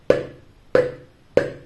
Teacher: голосок спить значить звук п іще і глухий Отже приголосний твердий і глухий і позначимо ми цей звук ось